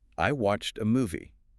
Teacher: With watched, that ed ending actually sounds like a sharp T sound. Watched. Make sure that T is crisp.